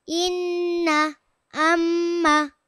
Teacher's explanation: নাকের বাসী হতে গুন্নাহ উচ্চারিত হয়